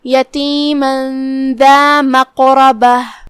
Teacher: कलिमत मक़रबह में यहाँ हर्फ क़ाफ है, क़ाफ पे जज़म है, तो यहाँ दो हुक्म हुआ, तफ़ख़ीम और क़लक़ला, लिहाजा हम क़ाफ को हिलाते हुए और उसे भारी आवाज में अदा करेंगे · जो कि रा पे ज़बर है तो रा का भी हुक्म है तफ़ख़ीम, तो हम क़ाफ को और रा को दोनों को भारी आवाज में अदा करेंगे। आखिरी में ताए मुदव्वरा का ध्यान रहे, हम उसे हा से अदा करेंगे अगर हम ये आयत पे रुकेंगे तो।